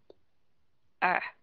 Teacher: các bạn đọc nó giống như là cái chữ ờ của Việt Nam mình đó nhưng mà cái đầu lưỡi hơi đưa lên một chút